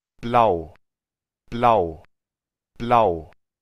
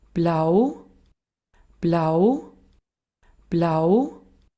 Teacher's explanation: El austríaco promedio nos lo va a decir como más largo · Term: la prolongación del diptongo